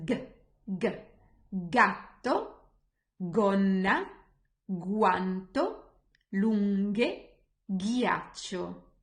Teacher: So if G is followed by A, O, U or H, the sound will be G. G is a guttural sound, it's called. It means that it comes from your throat.